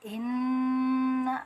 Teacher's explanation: Nun guna itu nun yang ada dengungan, jadi kita cara bacanya ditekan dulu karena ada tasdid, kemudian didengungkan, didengungkan sampai rongga hidung ya.